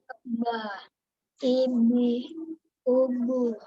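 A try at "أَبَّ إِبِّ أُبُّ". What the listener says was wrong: Ditekan, ditekan. Ini kita latihannya pakai tasdid. Jadi abba, ibi, ubu.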